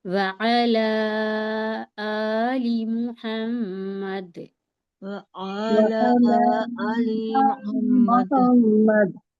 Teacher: لی کو جلدی کہنا ہے، آ کو کھینچنا ہے۔